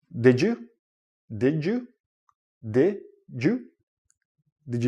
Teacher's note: when you're connecting words and you have a D and a why together it becomes like a j sound